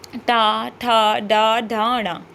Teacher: आगे की जीभ जो है वो देखिए टच कर रही है आपके मुख को आपके मूर्धा को टच कर रही है